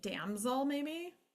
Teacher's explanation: We've got short vowel, and we've got schwa because it's next to the L.